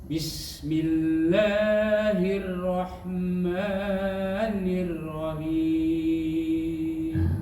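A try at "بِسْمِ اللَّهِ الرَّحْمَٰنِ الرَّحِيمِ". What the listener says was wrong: Rohnya masih kedengaran tipis. Bismillahirrahmanirrahim. Roh tebal itu getarannya tidak banyak, cuman sekali getaran. Takrir. Bukan hirrahmanirrahim, itu tipis. Bismillah.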